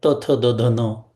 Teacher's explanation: आपली जीभ दातावरती आपटून तो आवाज निर्माण होतो. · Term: दंत्य